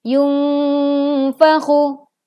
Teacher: Nun sukun bertemu huruf fa maka dibaca samar. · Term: ikhfa hakiki